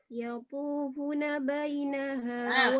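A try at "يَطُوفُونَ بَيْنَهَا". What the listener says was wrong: Fa-nya 2 harokat. Fa-nya 2 harokat loh.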